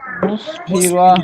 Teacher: মুসফিরা র টান দেওয়া যাবে না কিন্তু।